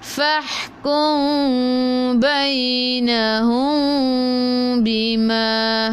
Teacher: Fahkum, ikhfa syafawi, mim bertemu dengan ba, kena dengung. Okey, nak rapatkan bibir jangan tekan, nak renggangkan bibir seolah-olah ada kertas di tengah-tengah. Ada sehelai kertas di tengah-tengah.